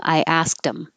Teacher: you can get rid of the th and connect the d so now you have dem